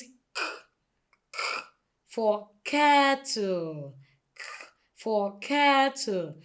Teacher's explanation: the back of the tongue is raised up to the soft palate. So the soft palate is the other part of the roof of the mouth, the soft part of the roof of the mouth.